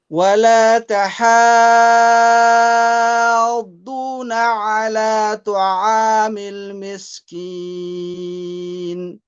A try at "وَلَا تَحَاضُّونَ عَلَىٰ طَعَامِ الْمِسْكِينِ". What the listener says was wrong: Okay, in the letter ta, I don't want you to bring a waw into it. Ta'a, ta'a, you're reading. So ta, ta'a, ta'a, ta'a, ta'a.